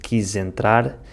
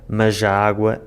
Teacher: the replacement of the /z/ sound by the /ʒ/ sound, in the connection of words. “Quijentrar” instead of “quizentrar” and “majaágua” instead of “mazaágua”.